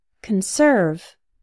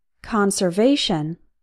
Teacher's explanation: the first form the verb has cun like son and the second form the noun or adjective has con like on